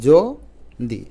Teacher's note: প্রমিত উচ্চারণে অন্তস্থ জ টা থাকবে না উচ্চারণ হবে বর্গীয় জ